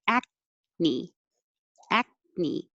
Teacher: k sound but you don't release the k from the back the back of my tongue is touching high but i don't say ak me i just hold it there